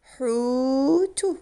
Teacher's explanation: We're using mad bil waw this time, the long vowel mad bil waw. There's a stretch in the middle. Hutu, it means fish or whale.